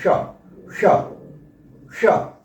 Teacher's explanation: मूर्धा से जीव लग कर के इसका उच्चारण होता है इसलिए इसे मूर्धन्य श कहते हैं